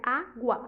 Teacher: Água é uma paroxítona, porque a penúltima sílaba é acentuada, né? Água, a penúltima sílaba é acentuada.